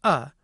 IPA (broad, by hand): ʌ